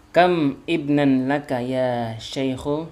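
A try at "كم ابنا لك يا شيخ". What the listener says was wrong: Iya, disambung aja kamibnan gitu.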